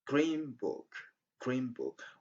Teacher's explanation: Instead of saying green book, we say green book, green book. It's as if we had M at the end of green